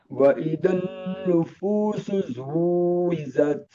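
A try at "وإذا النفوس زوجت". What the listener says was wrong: Zuwijat. Ada beda antara huruf za dan huruf ja. Zuwijat. Zuwijat.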